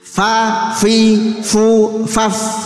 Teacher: bibir bawah bagian dalam mengenai ujung gigi depan atas menjadi makhrajnya fa